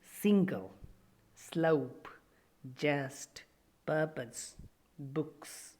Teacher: the air comes out through a narrow groove along the middle of the tongue with audible friction the soft palate is raised to shut off the nasal passage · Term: alveolar fricatives